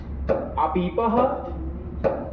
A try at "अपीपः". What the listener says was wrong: दीर्घ कहाँ से हो गए? पहले दीर्घ वाला बोलना था। मनमाने तरीके से नहीं बोलना होता है।